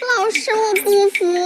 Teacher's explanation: So this fu goes up a little bit and then go down.